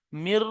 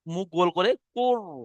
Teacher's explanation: রোয়া সাকিনের আগে জের এসছে, অর্থাৎ এই রটা বারিক হবে, মুখ গোল হবে না